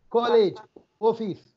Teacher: For Kerala people, they are giving stress to O.